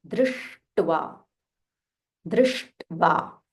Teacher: Sh, the tongue should roll a little bit.